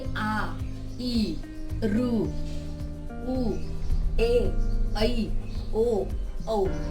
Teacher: जिन स्वरों में बोलते समय दो मात्रा का समय लगता है, यानी जिसे हम थोड़ा लंबा खींचते हैं उसे हम कहते हैं दीर्घ स्वर